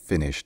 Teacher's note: le Che c'est aussi une consonne sourde